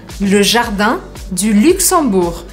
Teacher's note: prestem atenção porque a gente não fala o G no final